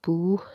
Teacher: واو ساکن سے پیچھے پیش، ایک الف کے برابر کھینچ کے پڑھا